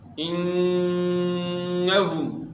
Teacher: نون مشدد میں آپ نے غنہ کرنا ہے